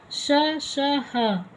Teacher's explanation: ऊष्म व्यंजन श, श, ह, इनको संघर्षी व्यंजन भी कहा जाता है। इनको बोलने से घर्षण होता है, इसीलिए इनको संघर्षी व्यंजन या ऊष्म व्यंजन कहा जाता है।